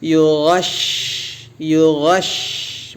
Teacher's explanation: dia punya sifat tafasyi ya nafas bergemuruh di mulut